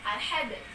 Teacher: cara membacanya sidalnya ini dia kita pantulkan, dia kita getarkan, kita guncang dia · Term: qalqalah